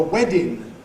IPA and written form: ˈwedɪn (wedding)